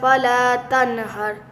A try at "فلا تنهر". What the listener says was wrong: تن پہ آواز نہیں ہلے گی تنہر